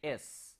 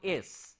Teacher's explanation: whenever we are saying S, we are not using our vocal cord for that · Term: unvoiced sounds